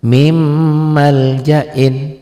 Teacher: Karena nun mati ketemu mim. Min bunyi n-nya ditelan jadi m, mim double m tuh. Lihat, n-nya hilang, n-nya jadi hilang. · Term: idgham bi gunnah